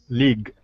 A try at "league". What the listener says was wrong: League. You need to elongate your E sound a little bit, otherwise it sounds a bit like lig, okay? So league.